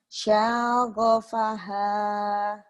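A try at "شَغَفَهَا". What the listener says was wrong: Pendek ujungnya yang panjang. Shin. Syaghafaha. Syaghafaha.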